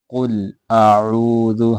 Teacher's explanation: قل، قوف موٹا ہے، اس کو موٹا کر کے پڑھیں گے، قلقلہ یہاں پہ نہیں کریں، قل قل نہیں کرنا۔ قل اعوذ، حمزہ اور عین دونوں کو واضح کر کے پڑھیں گے